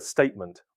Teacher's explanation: in the word statement, one sound may be lost between consonants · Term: Elision